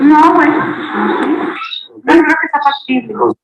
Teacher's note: se realiza como un acento plano, una forma un poquito plana, tendiente al descenso por la terminación